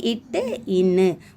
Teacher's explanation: நாவின் நுனி அன்னத்தின் நுனியை பொருத்துவதால் கிடைக்கிது